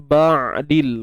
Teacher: Kemudian ba'dil, huruf ain sempit kan, tengah kerongkong